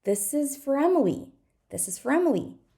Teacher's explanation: now we're going to stress Emily and we're going to reduce everything else as much as possible